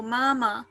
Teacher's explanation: And it has the first tone of pronunciation. So first tone is like completely flat, kind of monotone.